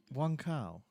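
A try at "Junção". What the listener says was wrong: Jean Cow. Synthil says it's pronounced with a CH not a K. So it's Zheng Xiao. Zheng Xiao.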